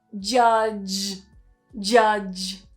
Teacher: Be particularly careful with that second word as well, because we've got that j sound at the start and at the end of the word. So make sure you keep that voicing going from the start to the end.